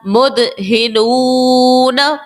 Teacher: دال جو ہے حرف قلقلہ کا ہے اور یہ ساکن بھی ہے، تو یہاں پر دال کو خوب ظاہر کر کے ادا کیا. اور اس کے بعد ہم نے نو اس طرح سے کھینچا کیونکہ واو ساکن سے پہلے پیش ہے، واو مدہ ہوگا، ایک الف کی مقدار حروف مدہ کے اندر ہم کھینچتے ہیں.